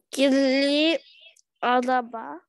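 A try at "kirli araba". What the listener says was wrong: Молодец. Кирли араба, абсолютно верно.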